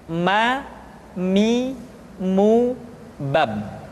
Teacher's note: huruf ma diucapkan dengan cara merapatkan dua bibir.